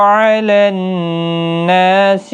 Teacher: نون مشدد پر غنہ ہوگا، کھینچا بھی جائے گا 1 الف کی مقدار کے برابر، نا الف مدہ ہے۔